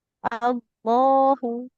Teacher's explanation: Lamnya panjang, h-nya pendek. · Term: lam jalalah, lam jalala